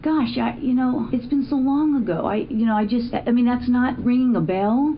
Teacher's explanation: there's this upward tone in her voice that's different than uptalk. Completely different than uptalk.